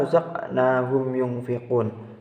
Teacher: cara membacanya terang di bibir dengan mulut tertutup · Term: izhar syafawi